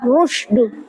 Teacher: adalah ro tafkim, dibaca tebal